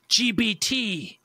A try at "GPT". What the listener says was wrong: No, it had a lot of buh to it. Have a listen back.